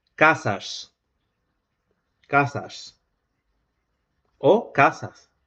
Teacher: Porque la primera realización o la primera posibilidad es que se repitan las variantes del fricativo alveolar sordo en posición explosiva. Es decir, a final de sílaba también puede realizarse la apical cóncava o la predorsal plana